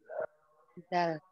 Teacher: Ujung lidah bertemu tempat tumbuhnya gigi seri atas